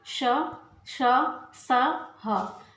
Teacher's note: ऊष्म व्यंजन इनका उच्चारण रगड़ या घर्षण से उत्पन्न वायु से होता है।